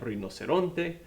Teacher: r in the beginning of the word just like in so when you have one r in the beginning of the word like rinoceronte uh it's gonna roll